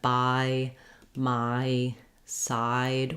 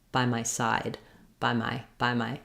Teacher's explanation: because side is longer and stressed the bi and my are going to go by more quickly